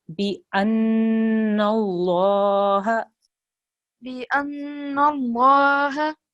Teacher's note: Make sure there's a noon with a shadda here. Okay, that's a noon guna. So you have to hold on that sound for 2 seconds. Bi anna Allah.